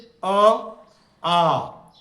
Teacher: अ आ का उच्चारण स्थान कंठ से होता है।